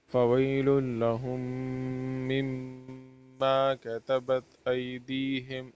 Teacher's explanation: فویل لہم مما کتبت ایدیہم، دونوں میم میں غنہ کرنا ہے